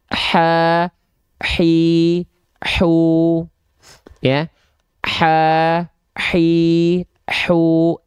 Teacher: Huruf H kecil dia punya sifat hams, tapi dia mengalir nafas.